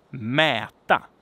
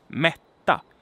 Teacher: as you can hear, mäta has a long vowel and mätta has a long consonant